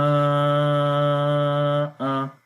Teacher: Okay, so we say again Jim, Alif, Mad, Fatha, Ja, Hamza, Fatha, A. We do not long Hamza, only we long Jim due to mad sign, and also here is Alif Madda, as Fatha is followed by Alif, so this is Alif Sakin.